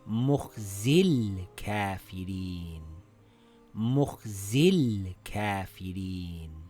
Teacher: Now if we are reading them together, we drop the Hamzatul Wasl. Now we see the lam has a sukoon and before it there is a long vowel. We drop the long vowel.